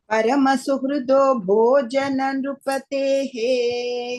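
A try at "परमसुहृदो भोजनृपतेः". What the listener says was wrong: Bhojana is not there. Bhojan Nrupatehe. Bhojana is not there, ma. Bhojan Nrupate.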